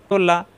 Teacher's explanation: লাম সহজ মাখরাজ জিহ্বার আগা উপরের দাঁতের গোড়ায়